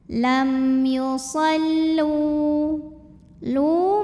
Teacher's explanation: karena ada wau sukun yang sebelumnya berbaris damah maka huruf lam kita panjangkan dua harakat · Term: m thobii dahiri